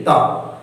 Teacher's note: और ऐसे ध्वनि जिनका उच्चारण दांत से हो, मतलब कि बोलने के समय जो हमारा जीभ है वह दांत से जाकर टकराती है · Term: दंत ध्वनियां